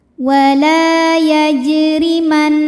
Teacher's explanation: Huruf ra dibunyikan secara tarqiq karena berbaris di bawah, maka dibacanya tipis.